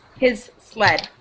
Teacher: you can kind of link them, but you don't want it to sound like just one Z